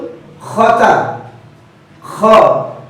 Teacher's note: তা হরফটি হাফজের হরফ অবশ্যই বাতাস বের করে বলবেন